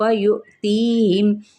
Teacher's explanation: یؤتیہم حمزہ ساکنہ ہو گیا، یہاں پہ ہم جھٹکا دے کے پڑھیں گے